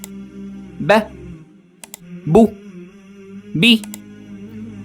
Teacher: Release the lips smoothly without adding a strong burst of air.